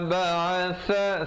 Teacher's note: sa di hujung lidah